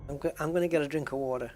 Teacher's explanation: I think my T sounds like a D, right?